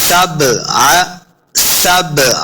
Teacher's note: बा साकिन है, बा हुरूफ़ क़लक़ला से है, तो हमने इसको खूब वाज़े करके पढ़ना है, हिला के पढ़ना है। सबअ, सबअ, आगे आइन का साइन है, यह हा नहीं है, आइन है, तो आइन को हमने तलफ़्फ़ुज़ के साथ पढ़ना है।